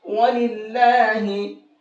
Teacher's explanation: یہاں پر میں نے اللہ کے نام کو باریک کر کے پڑھا ہے، وَلِلَّهِ، وَلِلَّهِ نہیں پڑھا ہے۔